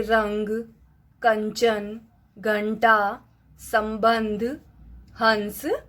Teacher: अम का उच्चारण करते समय जो वायु है वो नासिका से निकलती है, अर्थात नाक से निकलती है। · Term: अनुस्वार